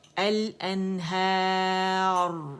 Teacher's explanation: मोटी रा होगी और तकरीर वाज़े होगी